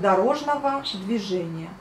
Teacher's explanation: Donc on écrit le G O à la fin, mais on prononce le V A à la fin. Et on prononce les A au lieu des O quand on le dit à haute voix